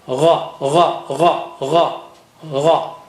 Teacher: Ghain comes from the upper part of the throat